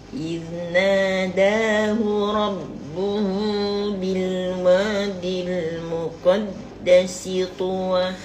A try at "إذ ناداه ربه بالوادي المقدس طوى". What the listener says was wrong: Bilwadil muqaddasi. Mulut tak terbuka, dia mulut kena gerak kan? Bilwadil. Bilwadil muqaddasi tuwa. المقدس طوى. Dia penting bila makcik baca tu kan. Khususnya pada dhammah tu kan.